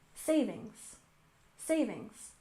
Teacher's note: we stress the first syllable in savings